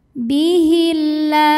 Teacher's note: alif lam Syamsiah sebab ada alif lam yang menghadapi huruf Syamsiah yaitu lam maka cara bacanya alif lam tidak dibaca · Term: Idgham Syamsi